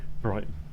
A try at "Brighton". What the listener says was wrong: Well, you can't pronounce the T.